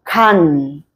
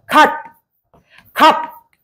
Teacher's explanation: 입성은요, 빠르게 닫히는 소리야. 빠르게 닫히는 소리로 종성 자리에 주로 기역과 디귿과 비읍이 왔을 때 빠르게 닫히는 소리라고 볼 수가 있어요.